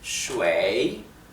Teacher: lleva el tercer tono, o sea el tono descendente y ascendente